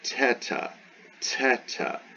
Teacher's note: Really, it's a tau. It's the Greek letter tau, but aspirated.